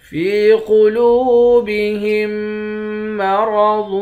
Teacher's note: فا کو یا کے ساتھ ملا کر ایک الف کے مقدار کھینچیں گے۔ قاف کو موٹا پڑھیں گے، لام کو واو کے ساتھ ملا کر واو کو بھی ایک الف کے مقدار کھینچ کر پڑھیں گے۔